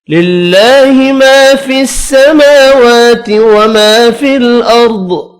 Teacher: اللہ کا نام زیر کی وجہ سے باریک پڑھیں گے۔ الف مدہ اور دو کھڑی زبر، تینوں کو ایک ایک الف کی مقدار میں کھینچ کر پڑھنا ہے۔